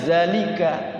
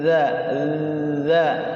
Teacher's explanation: Kalau za kan dia kayak ada desisnya kalau za ya. Kalau dza enggak ada desisnya, enggak ada znya, tapi azza ujung lidah sekali.